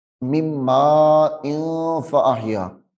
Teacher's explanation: تنوین کے بعد حروف اخفاء میں سے فا آ رہی ہے، یہاں پہ غنہ تو ہوگا